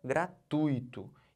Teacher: eu estou botando toda essa sílaba aqui, ó, o tui, como sílaba tônica